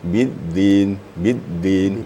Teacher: ditemukan ujung lidah dengan gigi atas atau ujung gigi atas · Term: makhraj dal